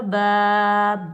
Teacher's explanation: یہ الف مدہ اس کو ہم ایک الف کی مقدار میں کھینچ کر ادا کریں گے